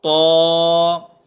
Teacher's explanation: اگر ہم طا کو پر نہیں پڑھیں گے تو یہ تا کی آواز بن جائے گی